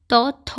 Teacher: त थ जो होता है वो अघोष वर्ण होता है